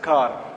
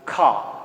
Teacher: when you have the ra sound in the end of the word that is not pronounced